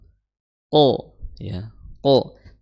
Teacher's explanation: Qaf, ya, sama-sama makhrajnya adalah di aqsal lisan, ya, di lidah paling dalam, ya, lidah paling dalam. Qaf, lidah paling dalam bertemu dengan langit-langit yang lunak, ya, langit-langit yang lunak.